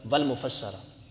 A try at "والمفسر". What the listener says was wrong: نہیں، والمفسر ٹھیک ہے، والمفسر مفسرہ بنا رہا ہے؟ اور چھوڑیں کتاب والے کو، یہ لکھ رہا ہے، زبر لگا رہا ہے کاتب